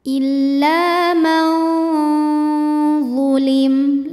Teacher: nun ini dibaca samar-samar. Jadi kita siap-siap membunyikan huruf dha disertai bunyi dengungan. Samar dan dengungannya sama karena huruf Dha ini makhrajnya tidak terlalu dekat juga tidak terlalu jauh dari nun. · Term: ikhfa awsat